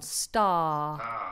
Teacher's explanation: So I want you to open the mouth wide and give me a nice long R vowel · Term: open vowel R